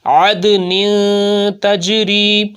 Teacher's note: دال کے اوپر قلقلہ خوب ظاہر ہوگا